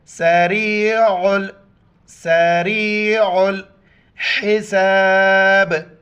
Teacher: را کو یا کے ساتھ ملائیں گے, عین کو گلے سے ادا کریں گے اور عین کو لام کے ساتھ ملائیں گے, بیچ میں الف کو نہیں پڑھیں گے.